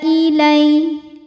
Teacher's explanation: sebab ada Ya Sukun didahului harakat fathah maka dibacanya lembut atau lunak